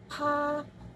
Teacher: konsonan letupan, bilabial, tak bersuara, dan beraspirasi